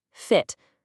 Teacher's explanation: for lax or short vowels like the i in fit, your mouth is way more relaxed and the sound is quicker